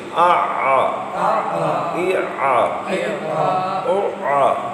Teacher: عین حلق کے وسط سے